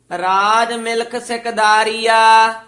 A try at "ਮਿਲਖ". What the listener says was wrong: ਇਹ ਮਿਲਖ ਖੱਖੀ ਨਾਲ ਉਚਾਰਨ ਕਰਨਾ ਹੈ। ਰਾਜ ਮਿਲਖ ਸਿਕਦਾਰੀਆ।